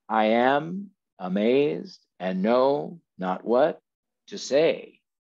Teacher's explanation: this rhythm of unstressed stressed unstressed stressed unstressed stressed is the heartbeat of english language poetry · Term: iambic pentameter